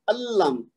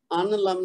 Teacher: اسی طرح یہ دیکھیے اللم، ان لم نہیں پڑھنا، اللم یعنی نون کی آواز گر جائے گی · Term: ادغام بلا غنہ